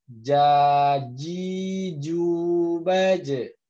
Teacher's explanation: ya saya dipraktekkan dulu rojim ya makhroja adalah di tengah lidah di tengah lidah kita ketemu langit-langit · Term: huruf Jim